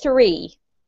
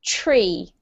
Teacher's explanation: this time we have to do a t sound instead of a th sound